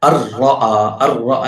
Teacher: voice is not automatically going to the nasal activity, so there is no ghunna, no need to ghunna. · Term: idgham bila ghunna